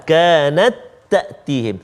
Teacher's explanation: Semuanya masukkan ta yang pertama tu ke dalam ta yang kedua. Sama sifat, sama makhraj.